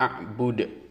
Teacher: kata abuda di akhir adalah qolqolah kubro karena kita berhenti membaca maka dibaca Qalqalah bunyinya ada di tenggorokan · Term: qalqalah kubro